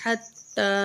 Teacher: تا کو ایک الف کے برابر کھینچیں گے